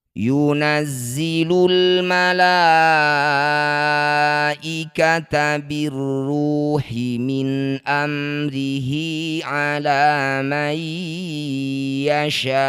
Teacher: Sya panjangkan 6 harokat, huruf terakhir sukunkan. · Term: mad arid lis sukun